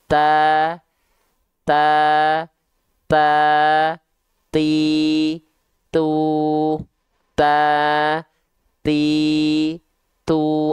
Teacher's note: kita pastikan dia pasti ada percikan nafasnya · Ketika taknya berharokat, kan dia mengeluarkan percikan nafas, lalu setelah itu keluar bunyi harokat a, i, u nya. Jadi sebenarnya ada percikan nafasnya, cuman terdengar agak samar karena kehalangin sama bunyi harokatnya.